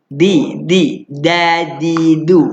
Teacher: Ujung lidah letak belakang gigi atas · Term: dal